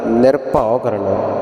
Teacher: ਪੂਰਖ ਹੋ ਜਾਂਦਾ ਐਸਾ ਨਹੀਂ ਕਰਨਾ ਕਰਤਾ ਪੁਰਖ ਕਰਨਾ ਨਿਰਭਉ ਨਿਰਵੈਰ ਨਿਰਭਉ ਦੇ ਵਿੱਚ ਭਬਾ ਲੱਗਾ ਹੋਇਆ ਸੋ ਭੇ ਦੇ ਨਾਲ ਉਚਾਰਨ ਕਰਨਾ ਬਬ ਨਹੀਂ ਲਾ ਦੇਣਾ